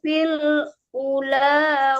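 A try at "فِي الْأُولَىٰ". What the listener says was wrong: Fil ula panjang U-nya.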